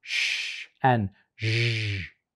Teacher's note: There's also these two, which occur a little bit further back, and you have basically the tip of the tongue goes a little bit further back, and it's the blade of the tongue that's actually coming up to the hard palate, and then that's where that friction is happening